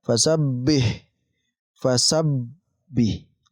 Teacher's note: Kita tekan sabbih. Kita tekan di huruf ba karena mempunyai tasydid.